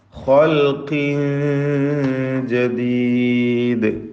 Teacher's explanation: ഖാഫിനും തഫ്ഖീം. ഖാഫിന് കുറഞ്ഞ തഫ്ഖീമാണ് കസ്റായതുകൊണ്ട്.